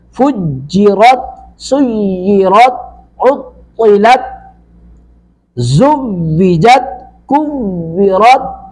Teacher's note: تا ساکن پر تا کی آواز لوٹ کے نہیں آ رہی، یعنی قلقلہ نہیں ہو رہا